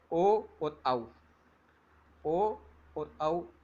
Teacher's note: इनकी ध्वनि कंठ, और आप ओ बोलते हो तो आपका होष्ठ भाग गोलाई का रूप ले लेता है। तो इनका उच्चारण स्थान कंठोष्टम है, ओ और औ का।